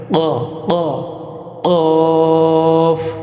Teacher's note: জিহ্বার গোড়া তার বরাবর উপরের তালুর সঙ্গে লাগাইয়া 2 নুক্তাওয়ালা কফ।